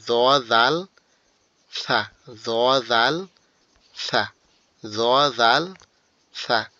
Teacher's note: 13 number মাখরাজটা জিহ্বার আগা উপরে দুই দাঁতের আগার সঙ্গে লাগবে